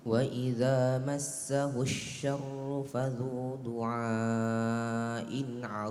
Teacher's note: Arid ya tidak qalqalah ya. D bukan salah satu huruf qalqalah tetapi huruf istialah. Tidak boleh ketika dia berhenti tidak boleh dipantulkan.